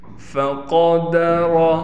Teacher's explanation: قاف کو موٹا کر کے پڑھیں گے، را بھی موٹا پڑھا جائے گا۔ فَقَدَرَ عَلَيْهِ، اس ہا کو بالکل نہیں کھینچنا، بعض بچے اس ہا کے نیچے کڑی زیر کر دیتے ہیں، یعنی ہا کو کھینچ دیتے ہیں۔